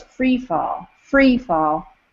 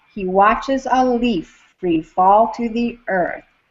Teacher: Freefall with the emphasis on free, but the meter makes me put it on fall.